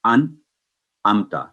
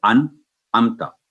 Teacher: آواز 1 سیکنڈ کے لیے کلیئر اور واضح ہوگی، آواز کو غنہ میں نہیں تبدیل کریں گے، نہ لمبی کریں گے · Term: نون ساکن یا تنوین